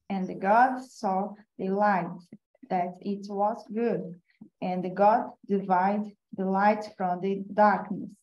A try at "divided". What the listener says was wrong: The verb divide, one needs to pronounce the last D. So divided. All right, just to make it clear that it's past tense, so divided.